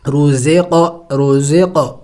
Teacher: رو، ز قاف زیر زق، نون الف زبر نا، رزقنا، دیکھیں قاف حروف قلقلہ میں سے ہے اور ساکن ہے تو ہم نے قلقلہ کرنا ہوگا، یعنی ہلا کے پڑھنا ہوگا